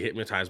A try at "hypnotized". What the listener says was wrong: He keeps saying hypmo with an M, I think.